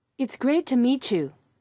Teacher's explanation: Look at the example sentence and listen to the way the t and y sounds combine to make a ch sound